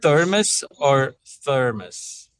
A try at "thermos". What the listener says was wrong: You'll want to accent on the first syllable there. Thermos.